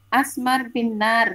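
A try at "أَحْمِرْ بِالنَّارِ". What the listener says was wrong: Ahmar, Bun, pakai H.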